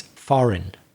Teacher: like you were pronouncing the g in that word f-o-r-e-i-g-n but you shouldn't pronounce the g